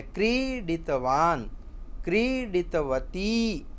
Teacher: ક્રી દીર્ઘ છે ને ડી હ્રસ્વ છે